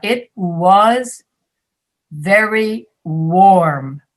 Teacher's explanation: slavic speakers will say it was very vorm all v sounds because you don't have the w sound in your language